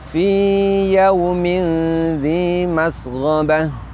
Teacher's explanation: yaitu dibaca dengan membulatkan bibir, wawu sukun setelah fathah juga dibaca secara lin, secara lembut